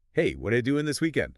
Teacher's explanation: you get what you linked smoothly into doing and then that links right into this weekend. The whole phrase flows. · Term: smooth linking